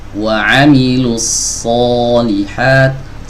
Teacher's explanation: Solihat tidak dimonyongkan, tidak dimajuin bibirnya, tapi diangkat lidah bagian belakangnya. Ini yang membedakan huruf shad dengan huruf sin dan huruf zai.